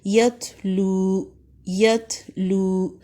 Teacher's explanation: لو مد اصلی ہے، 2 حرکات تک لمبا کریں